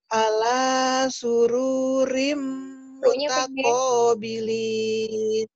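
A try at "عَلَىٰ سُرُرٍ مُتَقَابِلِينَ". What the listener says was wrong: Ya, ru-nya pendek. Ru-nya pendek.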